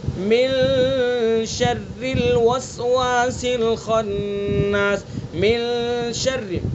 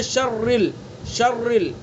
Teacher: اخفا کے اندر بھی غنہ کرتے ہیں، من شر، اور شر کی جو را ہے اس کو باریک پڑھیں گے، ٹھیک ہے۔ بہت سے اس کو جلدی میں پڑھتے ہیں شرل، شرل، تو شرل نہ اس کے اندر تکرار ہونا چاہیے نہ اس کو پر پڑھنا چاہیے۔ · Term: را کو باریک